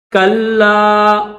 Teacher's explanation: لام کو دبا کر سختی کے ساتھ پڑھیں گے